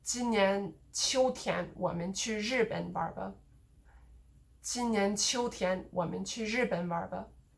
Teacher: So notice here the 我们, that's a pronoun that doesn't get stressed.